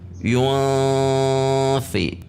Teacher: Ikhfanya di sini termasuk ikhfa yang pertengahan atau ausat. Sehingga saat membaca yun, lidah kita atau posisi bibir kita sudah pada makhraj fa.